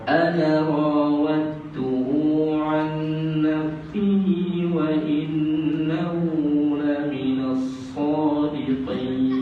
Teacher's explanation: Ana rawat. Bila kita sambung tu, ana tu tak boleh panjang.